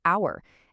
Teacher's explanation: The h is completely silent. The very first sound that actually comes out of your mouth is the vowel o.